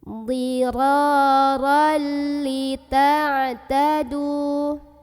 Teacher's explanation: Jadi ini ra-nya ra aja, jangan dibaca ron ya. Kita langsung masukkan ke lam, tapi tanpa berdengung. Idgham masuk bi dengan la tidak guna dengung. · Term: idgham bila gunnah